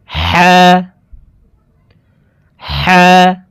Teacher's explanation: হালকের মধ্যখান থেকে হাফের উচ্চারণ করব।